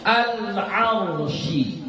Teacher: Al-arsh, angkat ra-nya, jangan enggak boleh. Ya, dia harus ra-nya pangkal lidahnya diangkat.